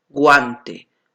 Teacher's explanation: está formado por una vocal cerrada y una vocal abierta muy bien entonces es un diptongo creciente